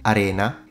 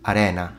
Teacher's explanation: with a closed E Arena is a type of sand whereas arena with an open air arena is an Amphitheater